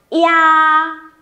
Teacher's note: i và a móc liền với nhau. Nó kết thúc bằng âm a nên khẩu hình của chúng mình sẽ mở rộng về cuối.